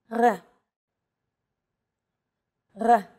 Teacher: This letter is pronounced differently than an English R. It's pronounced at the back of the throat instead of forward in the mouth. · It's actually closer to the German or French R, but without the roll.